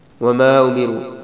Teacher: را کو موٹا پڑھنا ہے اس پہ مد بھی ہے اس کو تھوڑا لمبا بھی کرنا ہے چھوٹی مد ہے کم لمبا کرنا ہے